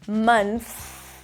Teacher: You stick the tongue out for the TH, month. It's a soft TH, allow the air to pass, and then you bring the tongue back in for the S